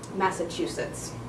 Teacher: to show with Plato where the stress is in Massachusetts so the stress is on the third syllable and there's a little bit of stress on the first syllable